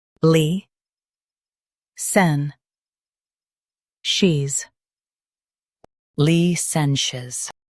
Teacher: stress sen and keep sh soft